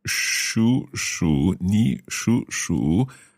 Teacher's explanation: It's different words, but exactly the same tone, same pronunciation. However, remember we have two third tones together. The first third tone becomes second tone.